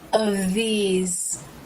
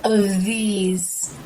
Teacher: The bottom lip comes up, making contact with the top teeth for the V sound. Then the lip pulls down, and the tongue comes through the teeth for the TH sound.